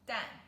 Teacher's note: fourth tone dan which means eggs